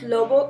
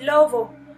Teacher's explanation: tenemos una B que tiene un sonido bilabial oclusivo sonoro. Y en el segundo ejemplo que pronunciaba como lobo, tenemos que es bilabial fricativa sonora. Entonces el alófono se representará como B y el siguiente alófono se representará como V.